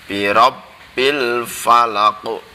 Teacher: birabbil itu banyak ada tasdidnya, maka dibacanya menekan